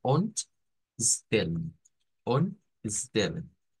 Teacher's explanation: De todas estas palabras que terminan con alguna vocal E más una consonante, el sonido no es como el, no es como en, sino que es con el schwa.